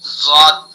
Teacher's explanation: زا کی جو آواز آ رہی ہے اس کا مطلب ہے کہ زبان کی جو نوک ہے نا وہ سامنے والا دانتوں پر ٹچ ہو رہی ہے